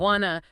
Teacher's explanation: The t at the end of want often gets dropped entirely · And the vowel sound in two weakens becomes unstressed. It's it's not a clear u sound more like a schwa. So want to smooths out into one.